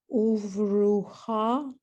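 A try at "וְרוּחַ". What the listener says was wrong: Uvruach. At the end, it's an ach, not a cha. I know it's crazy. Ha.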